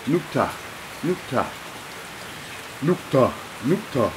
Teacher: Not quite as strong as an H letter, but a little puff of air at the end.